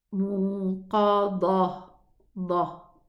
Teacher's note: the dal is lowered. Don't elevate it, otherwise it's going to sound like a dad.